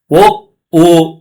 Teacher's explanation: ಕಂಠೋಷ್ಟ್ಯ, ಕಂಠ ಮತ್ತು ತುಟಿ ಸೇರುವ ವರ್ಣಗಳು